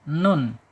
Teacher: antara tertahan suara dan mengalir suara adanya di tengah-tengah dia bainiah